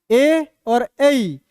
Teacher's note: ए और ऐ, ये दोनों जगह से हो रहा है, कंठ और तालु से, तो उसका उच्चारण स्थान हो गया कंठ और तालु।